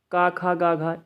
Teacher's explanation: ये कंठ से बोले जाते हैं